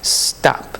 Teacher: There's no vowel between S and T.